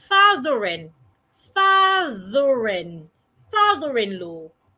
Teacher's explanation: because the next word after father start with a vowel, you need to link it together. So, it becomes fathering.